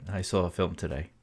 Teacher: our brains feel compelled to stick an r in between the two words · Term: intrusive R